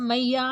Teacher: जैसे हम कहीं जागरण में जाते हैं तो मैया, जब भी भजन करते हैं तो मैया मतलब काफ़ी लंबा खींच रहा है, तो ये आपका प्लुत स्वर में आएगा